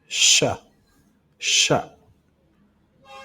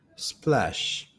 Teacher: To create sh, air is forced between the center of the front of the tongue and teeth.